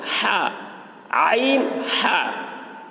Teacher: عین، ہا یہ دونوں حلق کے درمیان والے حصے سے نکلتے ہیں